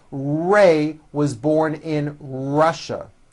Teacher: Notice how my lips come forward on all my R's and W's. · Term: R and W sounds